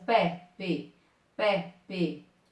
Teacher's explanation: É som aberto, não é som fechado, ok?